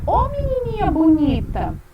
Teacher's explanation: eu faço a troca espontânea das vogais E por I, O por U